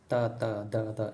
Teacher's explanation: ನಿಮ್ಮ ನಾಲಿಗೆ ಹಲ್ಲಿಗೆ ಟಚ್ ಆಗ್ತಾಯಿದೆ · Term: ದಂತ್ಯ ವರ್ಣಗಳು